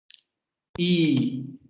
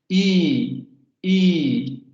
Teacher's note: Si ustedes pronuncian la I, se van a dar cuenta que la lengua se echa hacia la parte de enfrente.